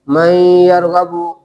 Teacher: من لدنا من یرغب، نون ساکن کے بعد حروف یرملون میں سے یا واقع ہوا، تو اب کیا کریں گے؟ نون ساکن کو یا سے بدل کر ادغام کریں گے